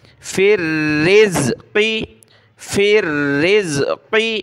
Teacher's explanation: فا کو را کے ساتھ ملایا، را کو زا کے ساتھ، تو یہاں را کے نیچے زیر ہے، اس کو باریک پڑھنا ہے